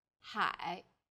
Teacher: is made of an initial ha and a final I and a third falling then Rising tone